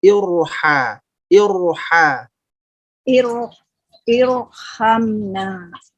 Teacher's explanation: Oke, jadi untuk Ibu evaluasinya adalah jedanya Bu ya. Jeda di huruf ro-nya dihilangkan, langsung mengalir ke huruf setelahnya.